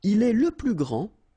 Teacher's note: grand, so you don't pronounce the final D, will be exactly the same as the plural form for the masculine, grand.